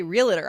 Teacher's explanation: I say realtor I put a little extra syllable in there